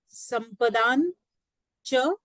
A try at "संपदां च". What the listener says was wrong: संपदां च, मकारः अस्ति द्वितीया एकवचनं।